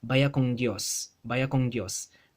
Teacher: When you have a final n on a word, sometimes it gets velarized into a ng sound. This n has a tendency to go from an n to an ng. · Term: velar nasal sound